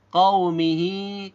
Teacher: kaunya tidak boleh terlalu panjang karena di sini hanya ada sifat lin